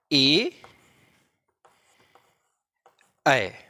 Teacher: अग्रभाग जो है, इस अग्रभाग की श्रेणी में जो वर्ण आते हैं वो आता है ई, ई और इन्हीं से बनने वाले वर्ण अर्थात ए, ऐ, ये चार वर्ण अग्र स्वर से बोले जाते हैं, अग्र स्वर की श्रेणी में आते हैं क्योंकि जीभ के अग्रभाग से बोले जाते हैं।